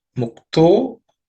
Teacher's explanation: the visarga in the taha becomes o. So to. Mukto, because yaha follows it.